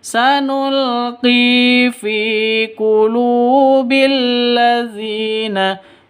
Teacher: fi panjang dua ketukan karena ada ya mati diawali dengan kasrah, ya mati sebelumnya kasrah, mad asli atau mad tabi'i.